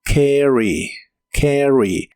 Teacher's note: La a se pronuncia como una combinación de los sonidos e y a